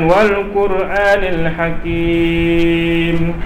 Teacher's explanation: Ra kalau berbaris depan dengan baris atas dia mesti tafkhim, tebal. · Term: tafkhim ra